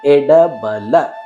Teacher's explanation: ಇಲ್ಲಿಯೂ ಕೂಡ ಡ ನಾಲಿಗೆಯನ್ನ ಮಡಿಸುತ್ತೇವೆ. ಬಲ ನಾಲಿಗೆಯನ್ನು ಮಡಿಸದೆ ಹಲ್ಲುಗಳ ಬುಡದಲ್ಲಿ ತಾಗಿಸಿ ಉಚ್ಚರಿಸುವಂತಹ ಅಕ್ಷರ ಲ.